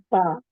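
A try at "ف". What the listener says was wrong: Jangan baca pa. Rapat bibir tu salah. Okay, huruf fa. Fa huruf F. Sebab sebutan huruf fa tu ataupun huruf F tu salah. Jadi itu dia bibir renggang huruf waw dengan fa. Okey, manakala bibir rapat. Okey, bibir rapat 2 huruf mim dengan ba.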